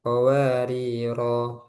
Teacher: Jadi ketika wasal dibaca pendek, ketika wakof panjang. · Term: sifar mustatil